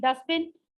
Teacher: I swallow T and I make it dustbin.